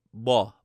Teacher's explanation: A lot of people ask, the M and the N sound kind of sound like B and D. And this is known as denasalization.